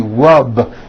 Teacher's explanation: the word rub ends with a voiced B. Rub. Today I rub.